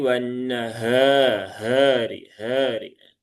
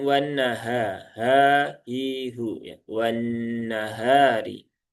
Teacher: Perhatikan H ada di pangkal tenggorokan yang paling bawah, ya, tapi tidak sampai ke dada ya. Kalau ke dada menjadi wanahari, hari.